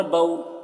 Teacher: اب اس کو جلدی پڑھیں گے کیونکہ واو لین ہے، واو ساکن سے پہلے زبر ہے تو واو لین ہے، اس لیے اس کو جلدی پڑھیں گے۔